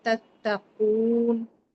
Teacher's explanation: काफ जो है हरूफ मुस्तालिया है और वाव मद्दा हो रहा है तो तत्तकून यहां टू काउंट लंगेट करेंगे